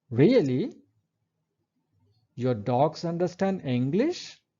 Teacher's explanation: a fall-rise intonation is used to express surprise or interest